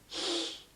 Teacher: All right, double L is one letter in Welsh, and this is how you say it. You put your tongue to the roof of your mouth, and you blow out sideways.